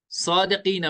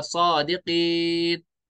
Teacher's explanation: जबर है, तो जबर को साकिन कर देंगे, ये बनेगा सादिकीन, साथ में यहाँ पे मदे आरिज बन जाएगी।